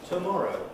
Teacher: the first syllable of tomorrow is the pre-head there is no head